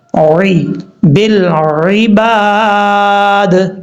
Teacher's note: عین کو اپنے مخرج سے ادا کرنا ہے، عین کا مخرج کیا ہے، گلے کے درمیان سے، جو حلق ہے گلے کے درمیان کے اندر، یعنی جس حلق کا تعلق گلے کے درمیان سے ہے اس حلق سے عین پڑھا جائے گا، عی، بالعباد، جب وقف کریں گے تو دال ساکن ہو جائے گا۔